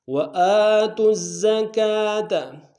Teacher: تا کو زا کے سامنے لیں گے، شد ہے، زا کو باریک ادا کریں گے.